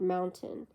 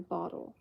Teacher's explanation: the glottal stop which is produced by a closure of the vocal cords rather than in the mouth